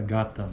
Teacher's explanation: Uniforme em todos os dialetos do português brasileiro. Símbolo G, ou G, oclusiva velar vozeada